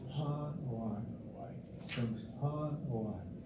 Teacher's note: the vocal inflection goes up with that A after the underlined E